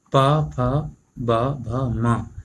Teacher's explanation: जब हम इनको पढ़ेंगे तो हमारे दोनों होंठ आपस में टकराएंगे और दोनों होंठों से वायु निकलेगी। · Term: पा वर्ग